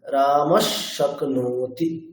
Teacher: বিসর্গটি হকারের মত উচ্চারিত না হয়ে সেই উষ্ম বর্ণের মত উচ্চারিত হবে